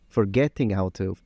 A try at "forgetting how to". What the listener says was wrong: Okay, listen to that really frontal T in the forgetting again. And you can even see on his teeth there. Look at that tongue.